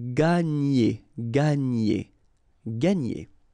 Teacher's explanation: when you've got this G and N, you get the sound NY